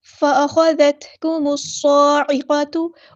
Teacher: کرنا ہے، قاف ہمارا ہیوی لیٹر ہے پورا ادا کریں گے، تا کی جو پیش ہے اس کو لمبا نہیں کرنا